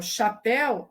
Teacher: quando eu falo chapéu, a sílaba tônica é pé